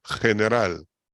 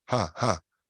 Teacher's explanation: en español de Venezuela y de Colombia es como una J suave